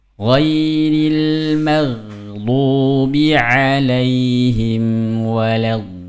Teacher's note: Ini 6 harokat ketemu dengan huruf lam yang bertasydid. Ini namanya juga nabroh ya.